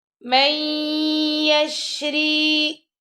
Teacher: اب میم کو آپ نے یا سے ملانا ہے، نون یہاں پہ اسکپ کر دیں گے. مَن يَشْرِي، میم زبر یا، میں یا زبر شین یش، میں یش را زیر یا ری، یہاں پہ را کو ہم نے باریک پڑھنا ہے کیونکہ را کے نیچے زیر آ رہی ہے.